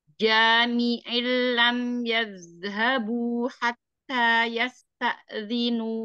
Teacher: tengah lidah menyentuh langit-langit atas ja